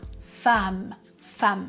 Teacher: j'écris femme avec un e mais je prononce comme un a